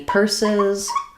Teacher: First syllable stress and letters UR say like in person. And then purses, the first letter S is going to be the S sound.